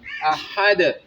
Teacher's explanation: اقصائے وسط حلق سے اس کو ادا کرنا ہے اس ہا کو